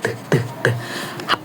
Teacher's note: ujung lidah menyentuh gusi belakang gigi atas